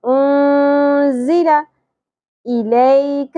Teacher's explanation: تو جب بھی نون ساکن کے بعد حروف اخفاء آئیں گے تو وہاں پہ اخفاء مع غنہ ہوگا، یعنی کہ آواز کو چھپانا بھی ہے اور اس کو غنہ کر کے یعنی کہ ہم نے ناک میں ٹھہرانا بھی ہے